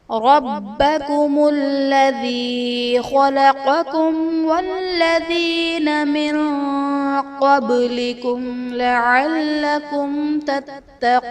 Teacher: ربکم میں با حرف قلقلہ مشدد ہے تو یہاں پر قلقلہ خوب جماؤ کے ساتھ ادا کریں گے